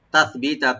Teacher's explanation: তাটাকে open করে সাটাকে অবশ্যই right দিবেন, তাস সিন যেন না হয়